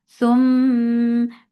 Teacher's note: This gunna is akmal, so keep the sound in your nose for a longer time.